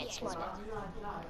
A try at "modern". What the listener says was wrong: No, not mod ed, mod un. Like modern family.